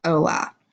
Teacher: As you can see here, it does start with an H, and H is not a letter we pronounce in Spanish. So you're just going to say hola.